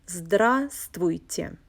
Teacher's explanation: Notice that the fifth letter, the consonant V, is silent when you pronounce this word.